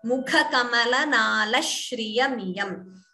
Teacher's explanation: Again notice dvitvam nala shriya. Sh is doubling.